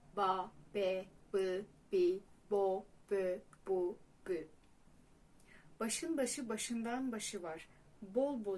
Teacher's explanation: Merhaba arkadaşlar ünsüz harflerimiz ile devam edelim B ünsüzü dudakların birleşip açılmasıyla tonlu olarak ortaya çıkar